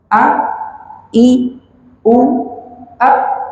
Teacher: Makhrajnya berbeda, sifatnya hamzah, sifatnya itu tertahan nafasnya dan suaranya